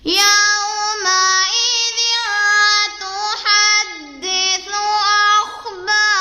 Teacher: واو ساکن سے پہلے یا کے اوپر زبر ہے تو یہاں واولین کا قاعدہ ہو رہا ہے. اسے ہم کھینچ کے نہیں پڑھیں گے بلکہ نرمی سے پڑھیں گے. آگے ذال کو نرمی سے پڑھیں گے.